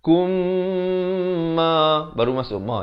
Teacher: Di sini idgham mislan saghir. Mim mati bertemu mim, dibacakan dengan dengung dua harakat.